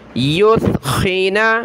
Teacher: حتی یثخن، یا ثا پیش، یث خا زیر خی، نون زبر نا، یثخن، ثا پر زبان نکالیں، ثا کی جگہ آپ نے سین نہیں پڑھنا، یثخن نہیں پڑھنا، معنی تبدیل ہو جائیں گے، ثا پڑھیں زبان نکال کر۔